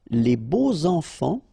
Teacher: so you make the liaison between beau, so adjective, and enfant. And here it's quite interesting because even if you've got this X, well, phonetically it will be like Z, so like if it would be an S, okay?